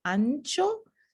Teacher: la lengua se mueve un poco más hacia atrás no es alveolar como el fonema es pre palatal se mueve un poco posterior · esta pequeña j representa una pronunciación pre palatal de la nasal